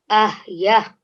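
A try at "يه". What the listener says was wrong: But it's the ya, ha. That's the order that they will work, okay? Ya, sabu.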